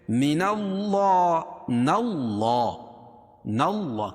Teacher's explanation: من اللہ، اللہ کے لام سے پہلے زبر یہ پیش ہو تو اللہ کا لام پور پڑھا جاتا ہے، اس کو موٹا پڑھیں گے